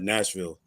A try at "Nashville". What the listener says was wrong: It's not Nashville. It's Nashville. You can't pronounce the Ville.